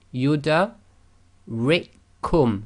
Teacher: So we just completely ignore that first kaf.